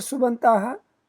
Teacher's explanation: In the word Subantaha, pa plus a has become ba. In the word, so Vyanjanam plus Swaraha has become a different Vyanjanam, inclusive of Swara. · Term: Sandhi